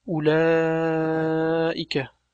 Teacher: Lekin bu soʻzda bu harf yaʼni u tovushi o'qilmaydi. Yaʼni bu yerda u deb cho'zmasdan, mat qilinmasdan o'qiladi